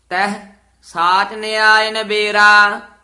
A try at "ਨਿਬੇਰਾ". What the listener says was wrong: ਨਬੇਰਾ ਨਹੀਂ, ਨੰਨੇ ਸਿਹਾਰੀ ਨਾਲ ਨਿਬੇਰਾ।